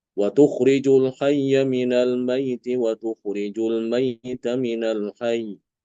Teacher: Untuk Imam Alqisai tasdidnya dihilangkan, tasdidnya dibuang sehingga ee tersisa ya sukun Almaidi ya.